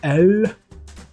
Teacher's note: However, when it's at the end of a word with a consonant behind it, the end of the pronunciation of the letter is squeezed off a bit, so it becomes more of an O. The last letter, the L, is in Dutch pronounced with the tongue against the roof of the mouth, so like this, L.